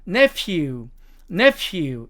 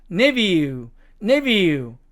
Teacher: 자, 이 네 번째 단어도 미국식 발음으로 가면 nephew, nephew 이렇게 가지만 영국식 발음으로 가면 nephew, nephew 이렇게 F 발음이 V 발음으로 발음이 나는 것을 알 수가 있습니다